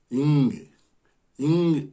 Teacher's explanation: காற்றை மூக்கிலிருந்து வெளியிட்டால் இங் இங் என்ற ஒளி பிறக்கும்.